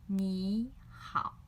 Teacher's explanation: So when two third tones together, we will change the first third tone into second tone.